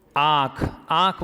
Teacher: इसमें नाक से भी वायु बाहर निकलती है, फिर कंठ से भी निकलती है।